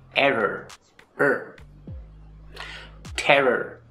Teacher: All of these are weak R sounds because they're not in a stressed syllable in the word.